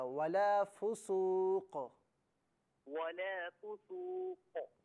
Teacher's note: چونکہ ہم قاف کو ساکن پڑھ رہے ہیں نا تو یہاں قلقلہ کیا جائے گا